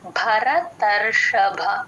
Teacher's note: రెండు భలకి మహాప్రాణం ఉందండి రెండిటికీ బ కి మహాప్రాణం వినిపించేటట్టే చెప్పాలి ఒకదానికి చెప్పి ఇంకోటి వదిలేస్తూ ఉంటారు గమనించుకోండి భరతర్షభ ర కి పొల్లు పెడతాము · ర కి పొల్లు పెడతాము రా ని సగమే చెప్తాము